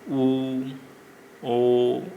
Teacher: जिनके उच्चारण में होठों की आकृति वृत्त के समान बनती है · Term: वृत्ताकार